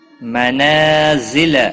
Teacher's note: نا الف مدہ ہے، ایک الف کے برابر کھینچ کر پڑھیں گے۔ ذل، زا کو تھوڑا سختی کے ساتھ ادا کریں گے۔